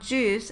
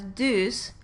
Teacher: So, if a child produced the word juice as deuce, we could identify the phonological process applied as stopping because juice begins with an affricate, j, which was replaced by the stop that is most similar in place of articulation to the place of articulation of j, in this case d.